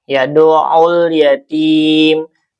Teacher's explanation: Kalau ini alif lamnya atau lamnya dibaca izhar ya atau jelas, tapi tidak memantul dan tidak juga ditahan. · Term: alif lam qamariyah